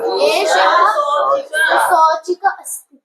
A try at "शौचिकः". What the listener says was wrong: आम, शौचिकः। शौचिका नहीं, शौचिकः है, शौचिकः।